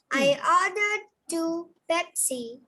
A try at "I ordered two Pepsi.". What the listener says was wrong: Where is the stress? Come on, stress on Pepsi. Pepsi is more important there.